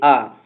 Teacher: इसमें कोई ट्रिक की आवश्यकता नहीं है क्योंकि जब हम बोलेंगे आ बोलेंगे तो पूरा विवृत यानी पूरा मुंह खुल जाएगा। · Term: विवृत स्वर